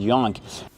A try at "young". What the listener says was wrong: We don't pronounce the word yonk. It's pronounced young. Use the short sound like cup and up. It's a relaxed sound. Your mouth is closed a little. Relax. Young. And make the NG in your nose. With no g sound. No young g. Just young. Young.